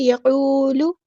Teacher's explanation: قاف ہمارا heavy letter ہے، واو مد آ گیا تو ہم یہاں پہ مد اصلی کریں گے